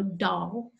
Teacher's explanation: hears an alveolar D with my Kansas accent, and the vowel is ah, so doll, and they'll hear this, they hear a distribution of sounds around this modal way of pronunciating doll. · Now my tongue is on the alveolar ridge when I say doll